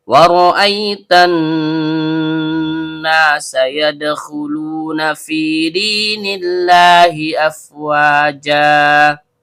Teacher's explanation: Waw huruf bibir, ro ujung lidah bertemu dengan langit-langit bagian belakang. Karena ro-nya berharokat fathah, maka hukumnya tebal atau tabkhim. Ada hamzah berbentuk alif atau hamzah kotok yang keluar dari tenggorokan bawah.